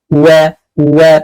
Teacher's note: Ketika wa maka monyongkan wa, tapi jangan lupa dia punya sifat istifal dan dia tipis. Wa bukan wi nggak boleh wu, apalagi nggak monyong wi nggak boleh ya.